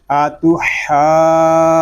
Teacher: جیم یہ حروف کلکلا میں سے ہے اور یہ مشدد بھی ہے، تو اس کو ہم جماؤ کے ساتھ ادا کریں گے۔ آتو حاج، جیم واو نون پیش جون، آتو حاجون، نون یا زیر نی، آتو حاجونی، اس کو آتو حاجونی اس طرح نہیں پڑھیں گے، بلکہ جیم مشدد ہے، اس کو جماؤ کے ساتھ ادا کریں گے، آگے نون مشدد میں غنہ بھی ہوگا۔